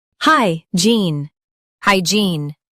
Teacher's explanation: Stress gene and keep hi clear.